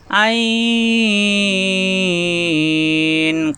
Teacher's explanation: কণ্ঠনালীর মাঝখানে চাপ দিয়ে 4 আলিফ টানতে হবে